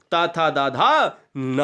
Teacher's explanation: आगे बढ़ी यह दोस्तों दंत पे आ जाते हैं ये दंत जो दांत की सहायता से बोले जाए वो दंत यानी दंत स्पर्श व्यंजन कहलाते हैं